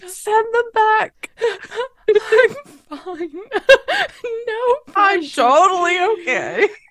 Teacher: it's a very breathy voice